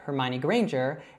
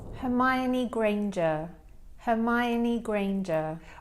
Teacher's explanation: I say it as a strong R, and she actually says it as more of that soft British R